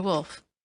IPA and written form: wʊlf (Woolf)